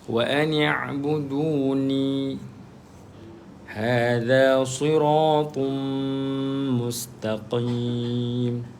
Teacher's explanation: Qaf tebal walaupun baris bawah tetap tebalah.